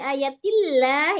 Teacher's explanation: Tapi kalau bi ayatillah, tillah tipis itu namanya tarkik. Tarkik ya tipis.